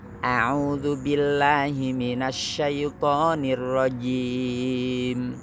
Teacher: jim tekan tengah lidah